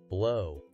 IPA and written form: bloʊ (Blow)